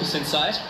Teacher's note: But for the man, the husband, when he asked the wife, "Do you want to walk inside?" The inside part is rising.